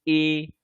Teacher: দেখুন যখন আমরা উচ্চারণ করতে যাচ্ছি এ, এ যখন উচ্চারণ করতে যাচ্ছি তখন হালকা কণ্ঠ, কণ্ঠ থেকে অবশ্যই বেরিয়ে আসছে কিন্তু তালুতে হালকা স্পর্শ হচ্ছে, সেই জন্য এগুলোকে ঈষৎ স্পৃষ্ট ঈষৎ স্পৃষ্ট বর্ণ বলা হয়।